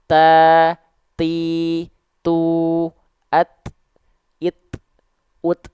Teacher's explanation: maka ketika ta dilafalkan itu kan dia ada percikan-percikan nafasnya · Ta, ti, tu, at, it, ut, hanya percikan saja karena dia punya sifat kuat, sifat syiddah. Dari segi suara dia nggak ngalir suaranya. Impactnya ke nafas kita nggak ngalir, tapi hanya berupa percikan saja.